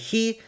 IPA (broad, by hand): xi